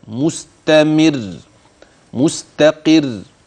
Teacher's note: اخلي بالي ان الراء هنا معنا مرققه وقفا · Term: الراء هنا معنا مرققة